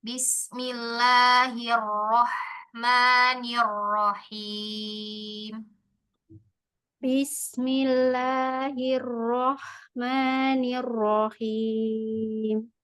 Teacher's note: Bunyi 'ha' perlu lebih banyak tarikan napas.